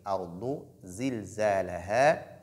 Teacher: la lettre Dad, nous savons qu'elle est emphatique